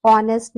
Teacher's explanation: begin with a vowel sound as the initial consonant H is not pronounced। अब इसमें H का pronunciation नहीं हो रहा है, इसीलिए हम क्या यूज कर रहे हैं, एन आर्टिकल का यूज कर रहे हैं।